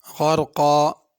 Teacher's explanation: غین کو بھی پر کرنا ہے، را کو بھی پر کرنا ہے، قاف کو بھی پر کرنا ہے۔ اگر اس آیت پہ رکنا ہو تو آخر میں الف پڑھیں گے غرقا، اگر ملا کے پڑھنا ہو تو پھر غنہ بھی ہوگا، پھر اس طرح پڑھیں گے غرقا والناشطات نشطا۔